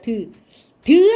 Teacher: 드 할 때는 혀 끝이 잇몸에 닿습니다